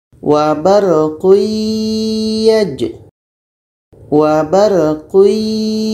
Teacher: tanwin bertemu ya, bunyi tanwin masuk kepada iya. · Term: idgham bi gunnah